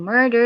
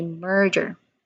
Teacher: It also sounds like murder, but then the middle part or the middle sound, d, it changed as j, j. So instead of saying murder, you say merger.